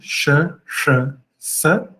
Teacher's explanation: E as três sibilantes, né, sh, sh, sa, palatal, retroflexa e alveolar